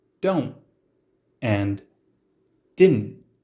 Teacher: the ending t sounds disappear and you hear don't and didn't when sounds fade or soften